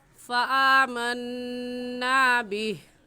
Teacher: جب ہم وقف کریں گے تو آخری حرف ہا ہے، اس کو ساکن کر دیں گے اور ایسے کہیں گے فآمنا بہ وَلَن نُشْرِكَ بِرَبِّنَا أَحَدًا۔